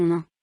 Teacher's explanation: l'air sort par la bouche et par le nez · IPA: [ɛ̃]